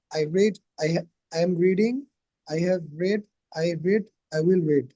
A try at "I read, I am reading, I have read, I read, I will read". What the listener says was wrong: Right.